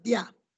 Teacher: Via, la I y la A. La I es cerrada y la A es abierta, ¿no?